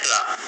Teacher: जिस व्यंजन के उच्चारण के समय जीभ की नोक वायु से रगड़ खाकर कांपती है उसे हम लठित बोलते हैं। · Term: लुंठित व्यंजन